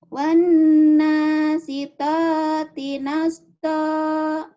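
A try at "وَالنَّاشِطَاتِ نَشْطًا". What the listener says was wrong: Shinnya mana? Shin gedenya nggak ada. Wan nashi. Shi. Ayo. Wan nasyitati nashta.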